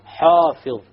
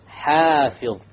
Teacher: Another common mistake is that the alif is made deep. So many people might say حافظ. This is a mistake. The alif has to be light.